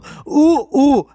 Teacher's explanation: ఉ ఊ అనేది ఓష్ట స్థానాలు